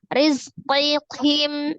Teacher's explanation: Kemudian dinya mad ya, mad tabi'iyah ada ya sukun sebelumnya kasroh di huruf dal. Rizqihim, arro'nya kasroh dibaca tipis, zainya sukun, ada as-safir ya, desisan, kemudian terakhirnya mim sukun tetap dibaca sukun karena wakaf ya.